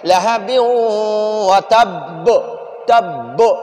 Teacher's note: تو اب اس با کو ہم قلقلہ کریں گے، ہم اس با کو جھٹکا دیں گے، اسی طرح پڑھیں گے لہب وتب تب، یہ بو والا آواز آخر میں نکالیں گے۔